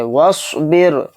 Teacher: رائے ساکنہ سے پہلے کیا ہے؟ با کے نیچے زیر. تو اس را کو بھی باریک پڑھیں گے